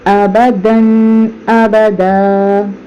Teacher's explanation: دال کے بعد الف الف کے اوپر دو زبر ہے، لیکن یہاں پر غنہ نہیں کریں گے کیونکہ اس کے بعد حروف حلقی میں سے حمزہ آ رہا ہے ، تو لا یموت ابداً ابدا غنہ کرے بغیر پڑھیں گے۔